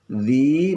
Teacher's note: Dzi mat tabi'i, panjangnya 2 harakah. A panjang 2 harakah.